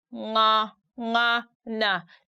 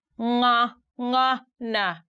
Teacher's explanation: you stick your tongue at the back upper part of your mouth and then the voice comes through your nose